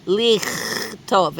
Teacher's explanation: we can hear that it has that throaty ch sound